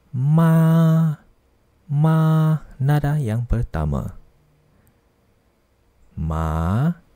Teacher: Nada yang pertama ialah nada yang mendatar.